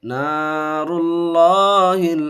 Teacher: اللہ کے لام سے پہلے دیکھیے پیش ہے، اس لیے پر کر کے پڑھیں گے.